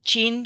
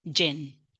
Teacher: For example, the ja sound in Spanish, it's a real problem because children say cha for j. So they say chin for jin.